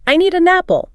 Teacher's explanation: The od sound at the end of need links to the es sound of an, and the n sound of an links to the a of apple. It comes out sounding more like, I need an apple. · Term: Linking